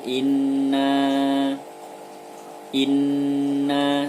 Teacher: nurnya bertasydid maka dibaca guna atau didengungkan dan ditahan dua harokat